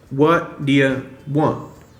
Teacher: the D hooks onto that ya sound